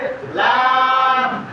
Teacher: জিহ্বার আগার কিনারা সামনের উপরের দাঁতের মাড়ির সঙ্গে লাগাইয়া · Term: 8 নম্বর মাখরাজ